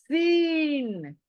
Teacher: same place, सामने के दांत नीचे के ऊपर के क्लोज, और पीछे से जुबान आएगी टक्कर देने, जबान दांतों को टक्कर देगी और सीटी निकाले जैसी ये आवाज निकालनी है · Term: सीटी वाला लेटर